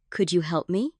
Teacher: The stress lands on help, not could. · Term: sentence stress